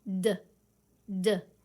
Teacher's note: touch your throat and make the D sound d d is it vibrating yes